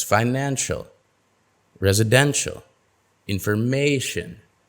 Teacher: stress comes immediately before the suffix